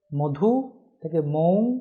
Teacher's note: দ্বিস্বর হয়ে যাচ্ছে ব্যঞ্জন লোপের ফলে।